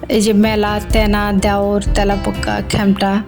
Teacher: এগুলোতে এর পরে আকার রয়েছে, যার কারণে এগুলোর উচ্চারণ বিবৃত হয়েছে, অর্থাৎ এর মতো উচ্চারিত হয়েছে। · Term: বিবৃত উচ্চারণ